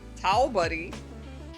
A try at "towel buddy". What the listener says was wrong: No, faster. Like towel buddy.